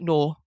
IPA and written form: no: (no)